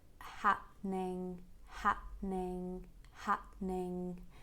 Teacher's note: and let the tongue go down a bit ning ning and for the ending you use the back of your tongue connected with a soft palate